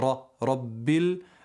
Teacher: raw here has a Fattah so it's a heavy letter that you have to say it with filling your mouth